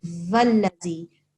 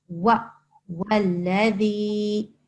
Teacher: It's not a va. This is a wa. Okay? Like the W sound in English.